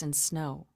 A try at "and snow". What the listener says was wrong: Just a hair slow, but not bad. Not bad.